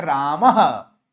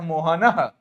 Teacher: ये विसर्ग लग गया तो इसका उच्चारण ह हो जाता है।